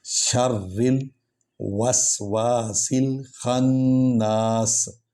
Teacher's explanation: شر راہ پر زور دیں گے کیونکہ اس پر شد ہے